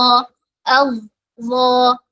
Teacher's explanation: ള പറയുമ്പോൾ നാവിന്റെ ബാക്ക് സൈഡ് ഉയർത്തിയിട്ടാണ് പറയുന്നത് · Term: ഉയർത്തി പറയുന്ന അക്ഷരമാണ്